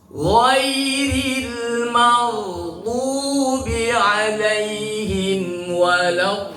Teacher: 6 harokat, namanya mad lazim mutsaqal kalimi.